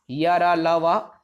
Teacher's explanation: अंतस्थ देखो, अब इसका उच्चारण जीभ, तालु, दंत और होंठ के स्पर्श से होता है।